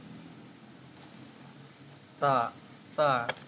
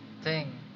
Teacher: Tha, tha, voiceless dental fricative